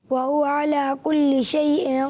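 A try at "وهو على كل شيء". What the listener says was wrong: عین کہتا ہے کہ اور تھوڑا سا درست کریں, کلی, وہو علی کلی, عربی تلفظ کے ساتھ, وہو علی کلی شیء قدیر. لا حمزہ شیء حمزہ, عین لا, یہاں پر عین نہیں ہے, کیا ہے, حمزہ ہے.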